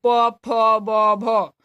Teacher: ओट से निकलता है प फ ब भ तो इसको ष्ठ वर्ण कहेंगे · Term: ओष्ठ्य वर्ण